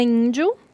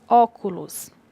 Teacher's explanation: Na palavra índio, o acento vem no início da palavra, da mesma forma como na palavra óculos. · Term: acento tônico